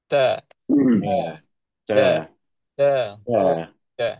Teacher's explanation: huruf ta dengan dal. Okey. Makhraj dia sama. Makhraj dia dekat mana? Iaitu hujung lidah.